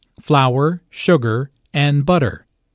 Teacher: Notice that this is a list, so there are short pauses between each item. Notice also that each ingredient is stressed because this information is important.